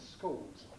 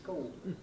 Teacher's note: Schools, with this vocalization, the L getting swallowed up into the O.